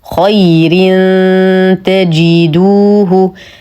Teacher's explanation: تنوين وبعده حرف التاء الحكم اخفاء حقيقي مع غنه كامله مرققه